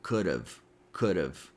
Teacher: reduce it by eliminating the h sound and changing the a sound to a schwa · we can connect could and have with the flap t or fast d sound. So it sounds like could have could have.